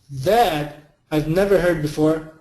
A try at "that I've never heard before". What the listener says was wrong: Great job.